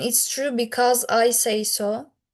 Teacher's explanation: Rise-fall intonation. You go up and then you fall.